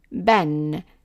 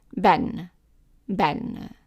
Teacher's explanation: ba with one fatha, by adding the other one is like adding n sound to it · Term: double fathas